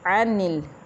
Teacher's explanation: عین حروف حلقی میں سے ہے، یہ وسطی حلق سے ادا ہوگا اور باریک ہے